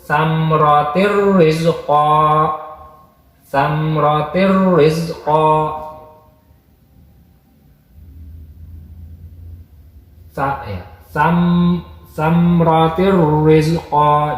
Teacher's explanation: Jadi tanwinnya hilang, langsung masuk pastir rizqa gitu. Jadi langsung masuk ke ro, tanwinnya hilang, tapi tetap dibaca asroh gitu. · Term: idgham bila gunah